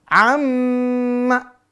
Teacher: Misal contoh pemirsa, amma, ya, jangan amma, amma. Maka di dengung, tahan dengungnya 2 sampai 3 harokat.